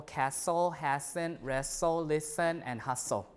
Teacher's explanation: T is also lost in s cluster